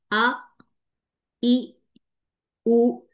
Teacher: हमजा की क्वालिटी ये है कि इसके अंदर सख्ती पाई जाती है और सख्ती के साथ इसमें शिद्दत है